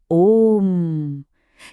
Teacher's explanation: यहां ओ के बाद जो तीन लिखा है उसका मतलब है कि ओ की ध्वनि को तीन मात्रा तक लंबा खींचना है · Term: प्लुत स्वर